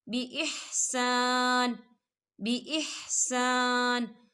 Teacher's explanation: وقف کی صورت میں نون جو ہے وہ ساکن ہو جائے گا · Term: وقف مطلق